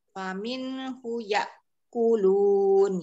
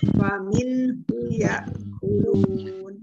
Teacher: itu hu-nya jangan panjang